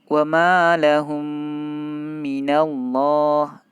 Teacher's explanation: Yang selanjutnya adalah idgham mimi, namanya idgham berarti dimasukkan kemudian ditahan 2 harokat. Misalnya yang ayat wa ma lahum minallah, lahum tidak boleh kita baca wa ma lahum minallah, langsung tidak boleh, harus kita tahan dulu, kita idghamkan, kita tahan 2 harokat.